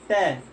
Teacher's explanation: ट को बोलने में आपकी जिह्वा क्या हो जा रही है, मुड़ करके ऊपर तालव्य से थोड़ा सा पीछे जो वाला स्थान है, यानी जिसको मूर्धा कहते हैं, ठीक है, वहां आपको स्पर्श कर रही है।